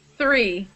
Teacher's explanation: So with TH, there's two different TH sounds. We have the voiceless TH, and it sounds like air is coming out, like you're breathing, and it's coming through your mouth.